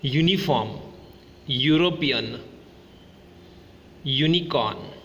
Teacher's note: All these words begins with the phonic sound u, yu, which is a consonant sound. Hence, we say a uniform, a European, a unicorn, okay.